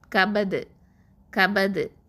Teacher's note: சுகுனாக்குவோம். அப்போது கல்கலத்துல் குபுரா அசைச்சு ஓதணும்